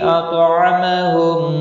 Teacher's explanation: تو مستعلیہ ہے، پر پڑھا جائے گا، ساکن بھی ہے